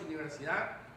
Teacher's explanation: nosotros diríamos universidad perdiendo la d final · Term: pérdida de tensión articulatoria